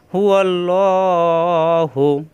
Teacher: লা না পড়ে ল পড়তে হবে, আর খাড়া জবরের জন্য একালিফ টান